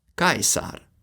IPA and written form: ˈkäe̯s̠är (Caesar)